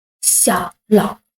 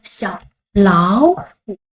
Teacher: We change the second word to the second tone.